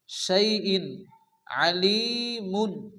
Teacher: শাইইন তানবিনের পরে ইজহারে হালকি 6টি অক্ষরের মধ্যে আইন আসছে এখানে বিনা গুণা তাড়াতাড়ি পড়তে হবে